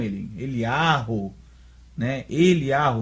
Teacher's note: Aqui, no hebraico moderno, nós vemos que o Kametz tem som de A, um A longo.